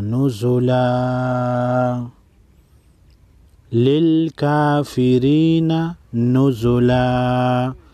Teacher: وقف کی صورت میں نزلن کو نزلا پڑھیں گے۔